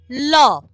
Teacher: এই ধ্বনির উচ্চারণে জীভের অগ্রভাগ দন্তমূল ছুঁয়ে থাকে আর শ্বাসবায়ু জীভের দুপাশ দিয়ে বের হয় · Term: পার্শ্ববিক ধ্বনি